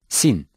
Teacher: Sin is articulated when the edges of the tongue touch the bottom part of the lower central teeth and sound like S in 7.